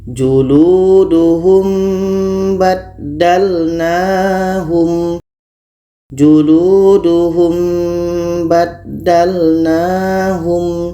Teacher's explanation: mati bertemu ba. Maka ini kita baca samar, ikhfa syafawi.